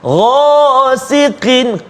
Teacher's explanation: Kemudian yang tebalnya ni ghain, lepas tu ada alif dengan dia, ghasiqin, ghasiqin tafkhim betul tebal kan. Ghasiqin, qin tipis pula sebab qaf baris bawah.